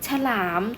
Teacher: ตัวข้างหน้าอ่านออกเสียงเหมือนมีสระอะแต่เป็นสระอะกึ่งเสียง สระอะกึ่งเสียงจะมีรูปสระอะไหมคะไม่มีรูปสระอะนะคะต่อไปภยันที่2จะอ่านเป็นไงเหมือนมี